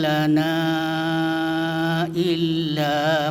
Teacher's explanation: Maka ini disebut mad jaiz munfasil. Jadi panjangnya itu sebaiknya 2,5 alif atau 5 harakat